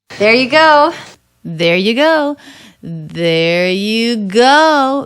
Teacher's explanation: The stress is all going up towards the peak. The energy peaks out on the word go. That has the O diphthong.